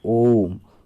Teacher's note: एक होता है इसमें प्लुत स्वर जिसमें तीन मात्रा होता है। इसमें लंबा समय लगता है, दोनों की अपेक्षा लंबा समय लगता है